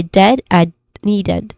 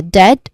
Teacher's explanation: dead, which has a relaxed, short e vowel sound